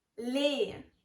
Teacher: The E sound is here pronounced like a short E, similar to the E in pet. Pet. Also, make sure to pronounce the last E in the name.